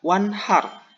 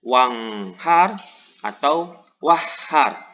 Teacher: pada katawan Har dibaca wanhar tidak wanghar atau wahhar dalam artian nun mati dibaca jelas Nun matinya tidak di idghomkan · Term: izhar